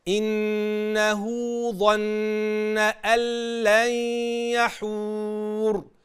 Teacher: وخلي بالك من ضم الشفتين كويس عند الواو، ما تفتحش الشفتين عشان الحرف ما يجيش منك غير منضبط.